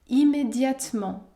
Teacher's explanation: on ne prononce pas la lettre e dans le mot immédiatement